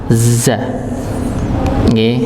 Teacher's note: za ini sama seperti sin tempatnya, yaitu ujung lidah bertemu dengan gusi bagian bawah, za. Coba kalau kita rasakan ketika baca za, posisi ujung lidah di bagian bawah, za ujungnya, za.